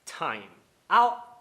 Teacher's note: dando aquele corte na garganta do T, que é um outro fenômeno fonológico que pode ocorrer. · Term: parada glotal